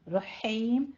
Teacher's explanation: ہا وسط حلق سے باریک نکالیں گے، اور آگے مد عارض وقفی، تو وقف یہاں پہ ہو جائے گا وقف حذف، یعنی فتح یہ جو ہمارے پاس ضمتین ہے اس کو ہم حذف کر لیں گے، ساکن کر لیں گے.